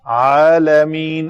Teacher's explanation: علی العالمین، لام پتلا ہے، لام پھر سکون کے ساتھ ہے پتلا۔ عالمین، عین کو نکالیں گے وسط حلق سے، اگر نہ نکلے تو وہ حمزہ بن جاتی ہے، اس سے بچنا ہے، اس کو حمزہ بنانے سے۔